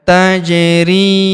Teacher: Huruf ja berharakat sukun kita pantulkan atau kita qalqalahkan. Tajri huruf ri kita panjangkan dua harakat karena terdapat ya sukun di depannya.